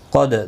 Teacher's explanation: دال ساکن پر قلقلہ ہوگا.